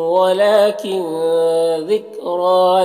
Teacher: کن کے نون میں اخفا ہو رہا، نون کی آواز کو ناک میں چھپا کر پڑھیں گے۔ ذکر را کو پر پڑھیں گے، کھڑا زبر ہے۔